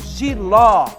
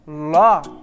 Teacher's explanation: a sílaba mais intensa está no final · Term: sílaba tônica